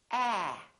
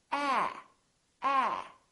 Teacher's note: your lips are open and your tongue is down and your tongue is tense